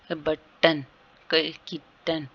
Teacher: glottal जो है stopping the air flow in the throat, जो हमारे जब हम वर्ड बोलते हैं तो हमारे जो गले से आवाज है वो स्टॉप होकर आती है